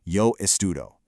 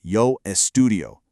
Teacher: You want to pronounce all those vowels really clearly so they don't get lost. It's 4 distinct beats.